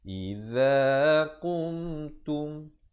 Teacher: mim mati bila ada tanda mati hukumnya izhar syafawi, jangan dipanjangkan, sempurna saja qum terus masuk tum.